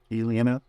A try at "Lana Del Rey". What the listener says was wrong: It's just Lana. It's not Alana.